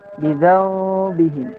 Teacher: Wasalisul iqlabu 'indal ba'i, itu iqlab, nun mati bertemu ba, maka cara membacanya miman yang pertama, mengganti huruf nun menjadi suara mim.